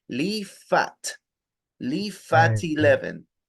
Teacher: Leave suena como una F al final. Imagínense ahí una F.